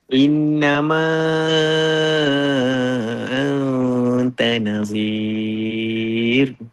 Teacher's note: Ra tarqiq dia mesti nadir. Dia kalau kita sebut ra pun dia senyum.